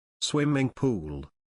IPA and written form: ˈswɪm.ɪŋ ˌpuːl (Swimming Pool)